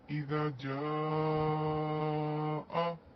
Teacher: جیم الف زبر جا، الف مدہ بن رہا ہے یہاں پر، اور اسی کلمے میں حمزہ اپنی اصلی شکل میں موجود ہے، مد بنی مد متصل واجب، یعنی کہ ہم یہاں پر 4 سے 5 حرکت کھینچ کر پڑھیں گے۔